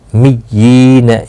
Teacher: یا کے نیچے کھڑی زیر بھی ہے اور مشدد بھی ہے، تھوڑا سختی کے ساتھ پڑھیں تاکہ تشدید ظاہر ہو